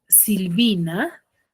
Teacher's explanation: La mayor fuerza de voz en la penúltima sílaba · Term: grave